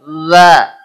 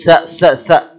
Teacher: Lidah, ujung lidah ketemu ujung gigi sudah bergetar. Za. Nggak boleh sa. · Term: zal